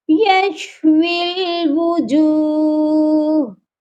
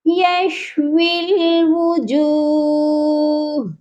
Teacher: واو کو لام کے ساتھ جوائنٹ کریں گے، درمیان میں یا بھی خالی ہے اور الف بھی خالی ہے، اس لیے ان دونوں لیٹرز کو چھوڑ دیں گے